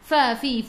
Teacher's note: gigi atas menyentuh perut bibir bawah